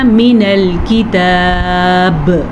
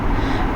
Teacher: جب وقف کریں گے تو قلقلہ ہوگا، با پہ ساکن بن جائے گا